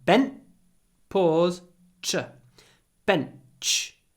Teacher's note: the N is clipped because it comes before an unvoiced CH sound